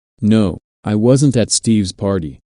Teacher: Notice that the emphasis here is on at, although prepositions normally have weak stress.